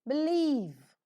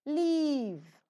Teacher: the sides of the tongue are lowered so that the air that is coming out from the lungs passes through the sides, and hence it is a lateral sound. Obviously, the vocal cords vibrate and hence the sound is voiced.